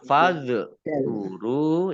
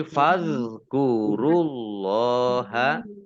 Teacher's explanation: zal sukun ini juga bukan kolkolah ya. Bukan kolkolah. Jadi tidak dipantulkan. Jadi jangan dibaca fazkuru ya, jangan gitu.